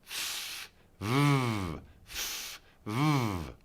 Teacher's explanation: the F and the V are made the same way, but F only uses air, while the V uses voice. F, v, f, v.